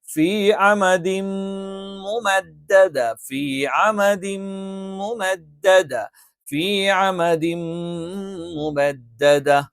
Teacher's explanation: ഫ മേലെ മുൻപല്ലിന്റെ താഴ്ഭാഗം താഴെ ചുണ്ടിന്റെ പള്ളയിൽ വെച്ചുകൊണ്ടാണ്